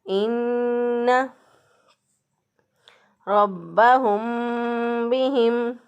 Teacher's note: इन्ना इसमें एक अलिफ के बराबर नाक में आवाज़ ठहरानी है, गुन्ना करते हुए इसको अदा करना है